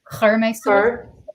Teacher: she has more emphasis on the U sound in the Munster